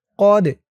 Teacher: এই দালটা কলকলার হরফ, ধাক্কা দিতে হবে